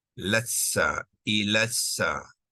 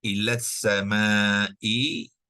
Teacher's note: alif maksurah digugurkan, hamzah wasal digugurkan, lam syamsiah, lam ta'rifah syamsiah juga digugurkan